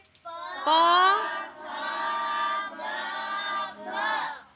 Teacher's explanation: હોઠ ભેગા થાય અને જે શબ્દ નીકળે છે એને ઓષ્ટ કીધું છે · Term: ઓષ્ઠ